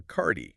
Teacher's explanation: So, under the pressure of a busy checkout line, the learner's phonetic instinct takes over and they soften the hard D of card by adding a vowel sound